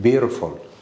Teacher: T is between two vowels, and we pronounce it as D